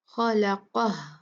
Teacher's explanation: खौ हैवी, लाम लाइट, कॉफ हैवी